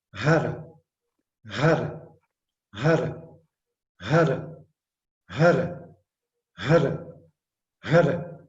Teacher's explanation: Então, a língua batendo no palato.